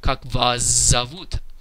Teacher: It's written kak vas zavut, but here we have a consonant cluster that goes that's between words, but nonetheless it still undergoes the vodka effect, and the s in the word vas gets voiced and pronounced as its voiced counterpart, which is of course the letter z.